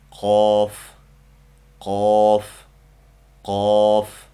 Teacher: Bu harf tilning eng ichki qismining usti bilan ustunki yumshoq tanglay orasidan chiqadi.